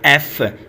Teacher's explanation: जब हमने अपने लिप्स और टीथ का दोनों का इस्तेमाल किया, दोनों को कांटेक्ट किया, तो तब जाके लेबियोडेंटल साउंड प्रोड्यूस हुई